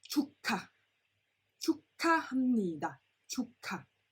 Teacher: Now, when a G meets a H, the G becomes a silent, it's being omitted. However, the H becomes a K sound, like a K sound, a KK sound